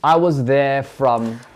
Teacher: Entonces, there, igual como dijimos recién, esa R no se pronuncia, la lengua está bien plana.